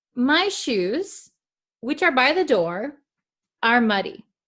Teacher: You can hear a slight pause with the commas. Okay. Where the commas are, I pause a little bit when I read it.